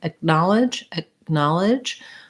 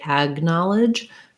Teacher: the k is pronounced like a g so in acknowledge acknowledge the k is pronounced more as a stopped sound so i don't say ack knowledge i don't release the air but i also don't say g i don't say ag knowledge